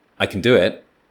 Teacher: can is eaten. It's not new information, so it's swallowed. You almost don't hear it. It's not a keyword.